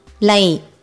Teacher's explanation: For this Lai, your tip of your tongue touches the starting roof of your mouth right above your teeth.